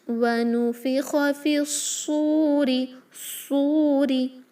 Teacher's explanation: تو فا کو ڈائریکٹلی صاد سے ملائیں، حمزۃ الوصل نہ پڑھیں، لام شمسیہ بھی نہیں پڑھا جائے گا. صاد ہیوی ہوگا انشاءاللہ، سین میں کنورٹ کریں گے تو ورڈ بے معنی بن جائے گا